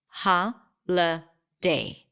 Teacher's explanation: the middle vowel is a schwa sound so I reduce the vowel there to a schwa ha la day so we have three vowels here and three